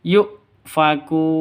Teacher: Kun mad arid li sukun, panjang boleh 2, boleh 4, boleh 6 ketukan